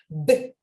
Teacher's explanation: 유지되는 긴 소리가 아니라 뚝뚝 끊기는 스탑 사운드로 보셔야 돼요